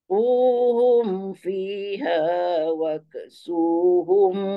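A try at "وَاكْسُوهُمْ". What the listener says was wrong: Jaga kaf. Jaga kaf jangan wak. Waksu.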